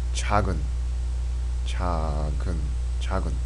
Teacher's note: The G sound kind of connects over to this next syllable here, because we have the silent consonant O. It's silent when it's placed in the first position.